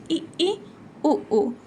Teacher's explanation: संवृत में आपका ऐसा महसूस होगा कि आपका मुख द्वार मतलब सीला ही हुआ है।